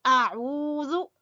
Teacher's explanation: واو مدہ ہے تو کھینچ کے پڑھیں گے